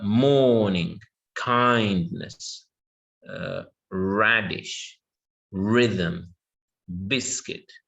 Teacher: so stress all of these will be on the first syllable